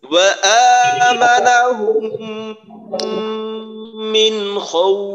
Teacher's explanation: ওয়া উচ্চারণের সময় একেবারে ঠোঁট পরিপূর্ণ গুল